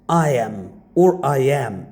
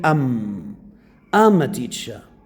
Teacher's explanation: This is not correct pronunciation because am is a weak form. So no stressed, unstressed.